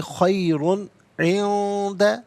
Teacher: خیرن، را پر دو پیش کی تنوین پر کر کے پڑھیں گے، اور تنوین کے بعد عندہ میں آپ دیکھیں عین حرف حلقی آ رہا ہے تو تنوین کو یہاں پر اظہار کے ساتھ پڑھا جائے گا، اخفا یا غنہ نہیں کریں گے۔